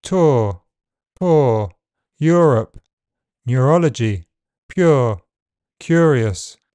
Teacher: a long vowel sound that is pronounced with the tongue slightly back, the lips rounded and the jaw close mid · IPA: /ʊə/